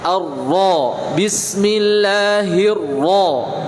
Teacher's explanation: Jadi ra ketika fathah tebalkan, maksimalkan. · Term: Ra tafkhim